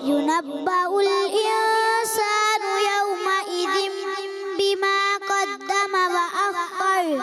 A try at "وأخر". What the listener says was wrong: خر را اوپر، زبان آپ کی اوپر چلی جائے.